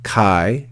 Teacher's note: then have the word Kai again Kai remember one syllable because Alpha Yota makes a diphthong so that's one syllable